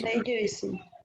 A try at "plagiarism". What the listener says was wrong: Plagiarism. Plagiarism. Plagiarism.